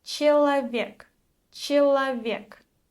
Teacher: The letter E without stress sounds more like a mix between E and I.